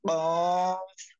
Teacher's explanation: জিহ্বার গোড়া তার বরাবর উপরে তালুর সঙ্গে লাগাইয়া